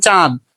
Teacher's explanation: নাকের মধ্যে থেকে হালকা করে উচ্চারিত হয় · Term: অনুনাসিক ধ্বনি